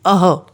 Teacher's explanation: जब भी हम अह का उच्चारण करते हैं या अह के शब्दों को पढ़ते हैं, उस समय विसर्ग की ध्वनि ह की तरह हमें सुनाई देती है। पहले हम अ स्वर बोलते हैं, फिर हल्की ध्वनि में ह बोलते हैं।